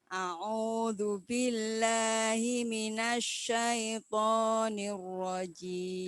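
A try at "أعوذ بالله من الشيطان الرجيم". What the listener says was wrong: Shinnya kirang medal. Masuk ke hidung itu shinnya. Jangan ke depan. A'udzu billahi minasyaitonir rajim. Bibirnya jangan ke depan. Jim. Jim. Ditahan, boten jangan sampai keluar desis. Jim. Senes jim nggih. Jim. Ja ji ju baje. Jim.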